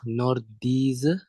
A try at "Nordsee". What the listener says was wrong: Nordsee. Bukan Z tapi Nordsee.